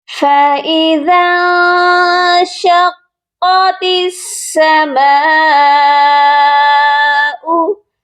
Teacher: تا کو سین کے ساتھ ملایا جائے گا، درمیان میں الف اور لام کو ہم چھوڑ دیں گے · مد متصل ہے اور اس کو ہم نے 3 سے 4 الف کی مقدار لمبا کر کے پڑھنا ہے